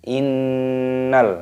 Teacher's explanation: Terdapat nun tasdid, ini hukumnya dibaca ghunnah. Artinya berdengung. Cara membacanya yaitu dengan cara didengungkan.